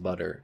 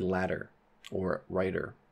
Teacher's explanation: flap so that is the sound in butter in the middle it's not a duh or a toe it's just butter it is a flap